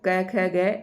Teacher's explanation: क वर्ग जो होता है ये कंठ से इसका उच्चारण होता है